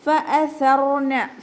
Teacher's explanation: ഹംസയെ നല്ലോണം ക്ലിയർ ആക്കി കൊടുക്കുക. സ ലൈറ്റ് ആക്കണം, പിന്നെ കുറച്ചൊരു എയർ പുറത്തോട്ട് പോണ സൗണ്ടിൽ വേണം, സീനായി പോകരുത് കേട്ടോ